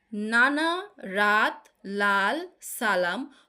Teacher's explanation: যেটা জীভের ডগা দাঁতের গোড়ার সঙ্গে গিয়ে বায়ুপথে বাধা সৃষ্টি করবে সেটা হচ্ছে দন্ত মূলীয় ব্যঞ্জন